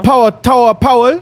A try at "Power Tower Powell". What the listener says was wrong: Ne, du sagst Towel.